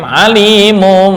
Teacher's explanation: Yang tepat menurut jumhur ulama tajwid adalah remang-remang setelah mengganti dengan mim.